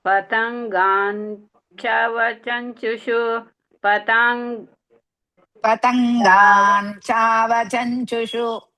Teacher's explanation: Cha is Dirgha and Mahaprana.